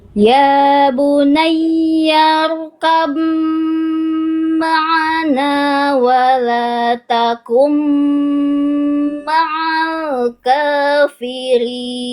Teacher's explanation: Jadi teman-teman nanti baca seolah tidak ada ba sukun. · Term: idgham mutajanisain